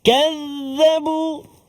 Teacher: Huruf zal, hujung lidah kita keluar sedikit.